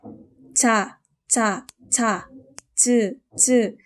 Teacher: 단단한 입천장 부분, 경구개에 닿아서 발음됩니다. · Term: 지읒